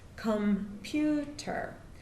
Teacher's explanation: We're all using a computer right now of some sort. So computer has 3 syllables, computer, and the stress is on the second syllable, on pew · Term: stressed syllable